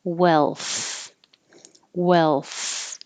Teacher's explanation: instead of up behind my top teeth it's more in the middle between the teeth